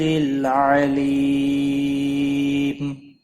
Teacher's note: وقف بالاسکان ہوگا, 3 سے 5 الف کے برابر کھینچ کر وقف کریں گے